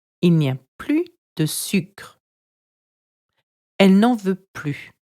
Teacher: Plus is pronounced without an S when it is used to express a negative statement meaning no more.